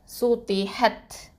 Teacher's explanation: இந்த ஹ வந்து வசத்துல் ஹல்க்கு, அப்போது ஹத். இந்த தா சுக்கூன் வந்து என்ன பண்ணணும், ஹம்ஸ் சிஃபத்தை கொடுக்கணும்